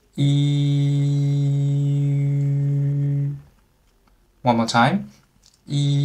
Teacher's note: first you pronounce E sound, and then gradually shape your mouth into an O shape